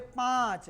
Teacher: और ये चंद्र बिंदु जो है कुछ इस टाइप से इसको सूचित करते हैं, ऐसे चंद्रमा पार के ऊपर में गोल दे देते हैं तो इसको चंद्र बिंदु कहते हैं। और इसका उच्चारण जब हम लोग करते हैं तो नाक और गला यानी कि मुंह दोनों से जो है इसका उच्चारण होता है। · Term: अनुनासिक